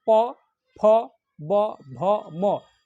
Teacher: बिना होठ सटे हुए बोल ही नहीं सकते हैं। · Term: प वर्ग